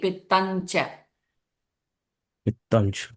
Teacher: Pittam is the Anuswara followed by cha sound. So it becomes NJ